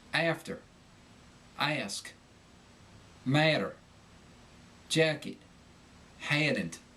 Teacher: The short A shiver. The sound picks up a medial Y.